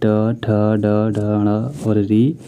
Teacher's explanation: Total टवर्ग में जितना भी होता है ट, ठ, ड, ढ और री, इन सब का उच्चारण स्थान कहाँ से किया जाता है, तो मूर्धा से किया जाता है, मूर्धन्य से किया जाता है, ठीक है।